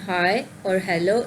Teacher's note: the sound h is in high or hello is voiceless and also usually included in the set of fricatives.